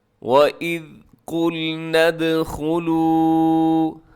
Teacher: لمبا کیجیے گا کیونکہ واو مدہ ہے آخر میں